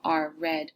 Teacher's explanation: en inglés tenemos lo que llamamos una R retroflex. Es retroflex R, es la R que hacemos en inglés como R, red.